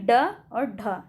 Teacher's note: चलिए उच्छिप्त व्यंजन क्या है, तो उच्छिप्त व्यंजन जो है ये जिन व्यंजनों के उच्चारण में जीभ सबसे पहले ऊपर उठकर मूर्धा को छूती है और उसके बाद झटके से नीचे आ जाती है